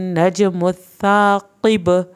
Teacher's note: अब बा पे जब हम वक्फ कर रहे हैं तो बा आ जाएगा साकिन हालत में, तो फिर क्या करेंगे, हम इस पे कलकला करेंगे